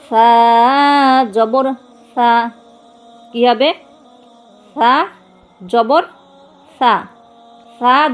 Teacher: জিহ্বার আগা থেকে বলবেন ছা জবরের সময় জিহ্বা ভিতরে নিয়ে যাবেন